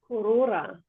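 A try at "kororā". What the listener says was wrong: Just a little bit longer on that A sound. A bit longer on the A, lifting your neck. Ah, because it's right at the end. You're good with your R sounds.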